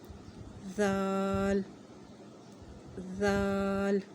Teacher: اس کا مخرج یہ ہے کہ زبان کی نوک سامنے والے 2 دانتوں کے کنارے پر لگے تو ذال ادا ہوگا